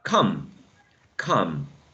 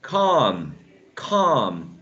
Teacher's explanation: come is very short compared to calm